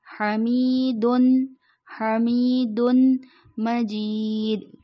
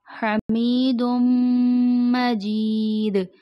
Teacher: دال کے دو پیش میم کے ساتھ ملائے جائیں گے، لیکن جو غلط ادائیگی ہو جاتی ہے اس کو پڑھتے ہیں حمیدن، حمیدن مجید جو کہ درست ادائیگی نہیں ہے۔